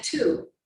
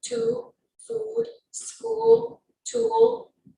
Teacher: For the oo sound, the lips are tense and rounded as if you're blowing a balloon, and the tongue is slightly tense and raised high.